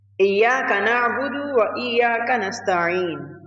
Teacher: The ain in na'budu should be pronounced softly without excessive pressure on the throat.